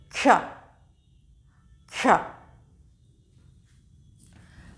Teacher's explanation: तो जब आप इसको बोलेंगे तो आप पाएंगे कि इसमें हल्का सा, बहुत धीरे से, बहुत हल्की सी क की साउंड आ रही है